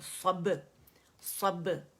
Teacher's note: با کے پر جائیں گے خوبصورت سا کلکلہ کریں گے با باریک صب صب. ٹھیک ہے با صب کر کے نہیں کریں گے موٹا با نہیں ہوگا صب.